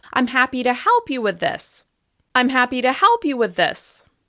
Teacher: Your pitch should fall from the most important word in this sentence, which is the word help.